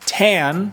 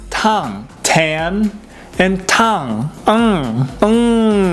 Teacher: it's like an english n but a little more nasally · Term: the japanese n